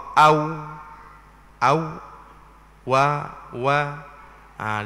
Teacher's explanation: tempat keluarnya di antara dua bibir juga, tetapi keluarnya waw itu terbuka sedikit dua bibir. Waw dia terbuka, au, wa.